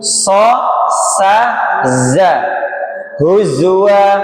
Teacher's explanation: dia yang berdesis, dia sifatnya sofir, desis. seperti bersiul.